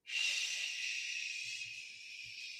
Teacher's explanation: the SH sound, you have rounded lips.